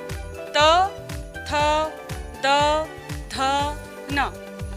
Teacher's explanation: हमारी जीभ का अगला हिस्सा दांतों को छूता है और फिर प्राणवायु निकलती है। इस वजह से जो ध्वनियां निकलती हैं वे हैं दंतव्य व्यंजन।